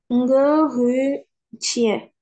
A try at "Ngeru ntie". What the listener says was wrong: Ngeru ntie. Mets bien le coup de glotte en tie.